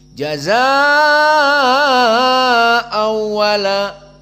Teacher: hanya lewat idgham tanpa makhraj dari khaysum dan tanpa gunnah.